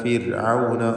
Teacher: ഫിർഔന റായിന് തർക്കീഖാണ്. സുക്കൂനും തൊട്ടുമുമ്പിൽ സ്ഥിരപ്പെട്ട് കസ്റുമുണ്ട്